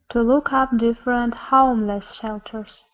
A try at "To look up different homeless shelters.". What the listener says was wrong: Almost. You're saying home.